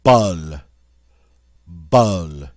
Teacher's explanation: In French, it's somewhere between the short O in hot and the short U sound in hut.